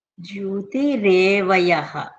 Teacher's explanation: ఆ జ్యోతి ఆ జో కింద యా వత్తు కూడా వినపడాలి